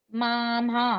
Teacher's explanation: మామలో మొదటి మ కి దీర్ఘం తర్వాత మ రస్వంగానే అంటున్నాం